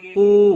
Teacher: واو مدہ ہے، ایک الف کے برابر کھینچ کر پڑھیں گے